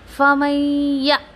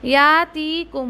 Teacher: फिर नून साकिन के बाद देखिए या मुशद्दा है, इसको इदगाम विद गुन्ना, और हमज़ा साकिना, फमय्यतीकुम, या ये क्या कर रही हूँ मैं, हमज़ा साकिना को झटका दे रही हूँ